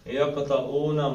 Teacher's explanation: اور یقطعون میں قاف کا قلقلہ ہے